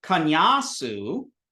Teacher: you have the sa sound, and it's a dental sa